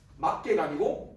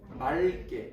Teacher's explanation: 리을 기억 같은 경우는 뒤에 기억으로 시작하는 어미가 오면 어떻게 발음해야 한다? 기억이 아니라 리을로 발음해야 됩니다. 그래서 막다 같은 경우 뒤에 개가 오면 막개가 아니고 말개 이런 식으로.